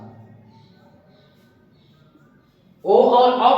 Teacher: ओ और औ का उच्चारण कंठ ओष्ठ से